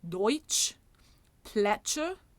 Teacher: the affricate, which is a T plus the esch